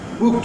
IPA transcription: w.uː.t